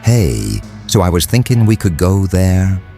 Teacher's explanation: High rising intonation, that habit of making statements sound like questions.